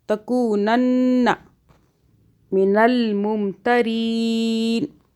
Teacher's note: اور نون مشدد پہ ہم نے گنہ کیا 2 سیکنڈ کا